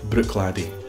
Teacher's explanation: Harden the first CH and drop the second one